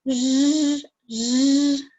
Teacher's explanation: so it's somewhere in the middle of the mouth and it vibrates.